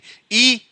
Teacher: ई बोले, जीभ आपके आगे रहेगी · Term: अग्र